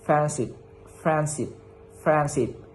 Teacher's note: the D is deleted because D is difficult to pronounce quickly